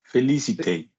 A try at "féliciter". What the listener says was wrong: Féliciter. Lovely.